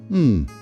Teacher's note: o som bilabial, m. É aquele som que exige o fechamento dos dois lábios.